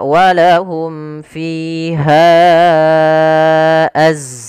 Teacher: Mad jaiz munfasil merupakan mad yang cabang daripada mad far'i, yaitu mad yang terjadi disebabkan karenanya adanya hamzah. Pada dasarnya ha itu 2 harokat, karena datang setelahnya huruf hamzah maka menjadi panjangnya 4 harokat atau 5 harokat.